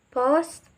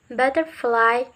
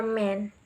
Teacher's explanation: When we say p, b, and m, the upper lips and the lower lips are stick. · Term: bilabial